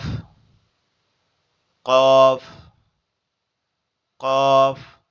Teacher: জিহ্বার গোড়ার অংশটা উপরের তালুর সঙ্গে লাগবে, লেগে উচ্চারিত হবে কফ। কফ, দুই নোক্তাওয়ালা কফ।